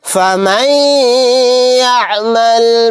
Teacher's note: نون ساکن کے بعد یا آ گیا تو یہاں پر ادغام غنہ کا قاعدہ ہوگا، یا کے اندر غنہ کر کے پڑھیں گے